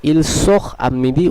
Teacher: যদিও আটা একটি ভাওয়েল, কিন্তু তেটা এর সঙ্গে সংযুক্ত হলো না, বরং তেটা সাইলেন্টই থেকে গেল। তার প্রথম কারণ হচ্ছে যেটি আমরা নিয়মেই আলোচনা করলাম, সেটি হলো এই তের আগে একটি এখ আছে, এর ফলে ইল সোখ আমিদি উচ্চারণটি হবে।